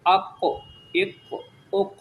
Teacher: اور جب یہ ساکن ہو جائے قاف تو اس پر قلقلہ بھی کرتے ہیں، یعنی تھوڑی سی اس کو حرکت دیتے ہیں